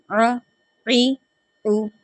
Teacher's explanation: عین کو ادا کرتے وقت ایک تو یہ حلق کے جو درمیان والے حصے ہیں نا وہ ادا ہوگا